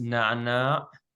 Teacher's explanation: it's pronounced very back in your throat